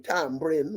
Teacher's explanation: an epenthetic B is put in the middle of the word